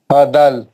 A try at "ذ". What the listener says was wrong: زال دال نہیں ہے، یہ نقطہ ہے اس کے اوپر. از از.